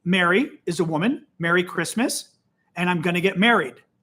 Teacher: in Illinois where I'm from these words are pronounced the same